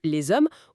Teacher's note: contrairement au H muet de les hommes où là on fait bien la liaison en Z